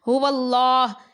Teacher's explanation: لام کو پر پڑھا جائے گا کیونکہ واو کے اوپر زبر ہے